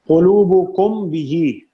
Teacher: میم ساکن ہے، میم ساکن کے بعد حرف با ہے، اخفا ہوگا